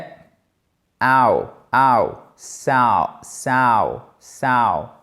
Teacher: c'est un A suivi d'un OU. On glisse du A au OU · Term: combinaison de voyelles